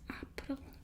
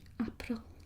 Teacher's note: the little roll on the R, which is a given with Afrikaans